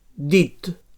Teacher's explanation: So dental oclusiu sonor.